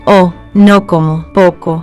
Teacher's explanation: It is always O, like in go. But pure English go glides to go. Spanish O. Stays O.